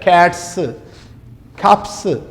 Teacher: while pronouncing these sounds there is no vibration in the vocal folds that is why we call these sounds as wise less and